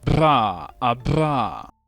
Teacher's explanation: It's a trill consonant, which means it is produced by directing air over an articulator so that it vibrates. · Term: bilabial trill